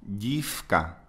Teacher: Chữ K thì là vô thanh. Vì vậy thì nó đổi cách phát âm của phụ âm đứng trước về hữu thanh thành F vô thanh.